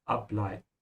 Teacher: So emphasize the prefix ab